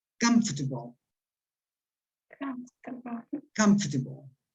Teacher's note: esta segunda A prácticamente no está